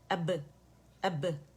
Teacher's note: خوبصورت باریک سا با کا قلقلہ ہوگا, ٹھیک ہے, دونوں ہونٹوں کے خشک سے آپس میں مل کے واپس آواز پلٹے گی ملا کے, ٹھیک ہے.